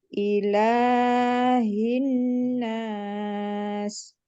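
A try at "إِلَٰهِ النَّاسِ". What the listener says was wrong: Lamnya kepanjangan Bu. Cukup satu ayunan aja. Ilahin nas. Boleh ditekan lagi untuk nunnya, dilamakan lagi.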